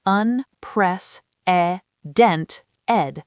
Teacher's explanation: unprecedented with stress on the third syllable